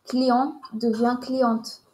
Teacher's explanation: Mais attention, on ne prononce pas le T de client au masculin.